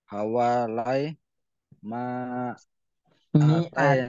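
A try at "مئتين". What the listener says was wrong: mi'atai ini bukan ma. Mim ya kasrah.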